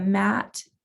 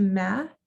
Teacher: the final consonant, in this case T, is omitted in the speech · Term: final consonant deletion